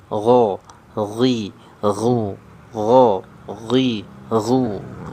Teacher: Berarti dia masuk ke jahar. Tidak mengeluarkan nafas. Gho, ghi, ghu, gho, ghi, ghu.